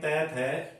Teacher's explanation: यानी हर वर्ग का प्रथम और दूसरा व्यंजन अघोष